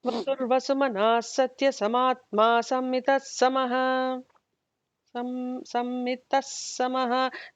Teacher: It's the ma that needs the emphasis, not the sa. · Not double S. It's only the double M that needs to be pronounced.